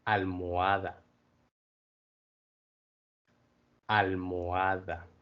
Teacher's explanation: In almohada, there's a little kind of space in the middle, and you'll hear that when pronounces those.